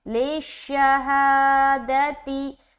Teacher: آگے لِلشَّهَادَةِ، لام شین زیر لش، شین زبر شا، لشا، ہا کھڑا زبر ہا، دال زبر دا، تا زیر تی، لِلشَّهَادَةِ، صرف ہا کو لمبا کرنا ہے، باقی کہیں پر لمبا نہیں ہوگا